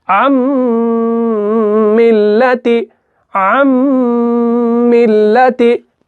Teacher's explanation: नून इस मीम के अंदर क्या हो जाता है, मुदगम हो जाता है, यानी इसके अंदर मिल जाता है। इसी का नाम इदगाम है।